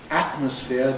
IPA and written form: ˈætməsfɪə (atmosphere)